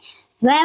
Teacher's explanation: दांत और होठ दोनों को मिलाकर इसका उच्चारण किया जाता है